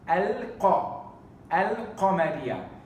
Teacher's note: al-qamariyya, we pronounce the lam of the alif lam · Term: alif lam al-qamariyya